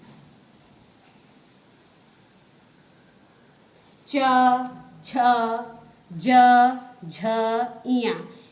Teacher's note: च, छ, ज, झ, इया। ये हमारे तालु या तालव्य द्वारा बोले जाते हैं।